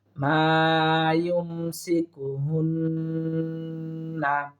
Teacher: এই হুন্না আমরা ওয়াজিব গুন্না এক আলিফ টানার চেষ্টা করব।